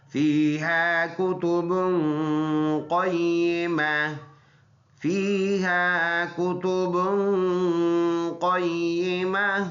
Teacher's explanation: با پر دو پیش ہے، ناک میں آواز لے کے جائیں گے